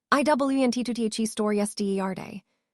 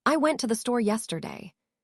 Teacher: The stress falls on store because that's the most important information.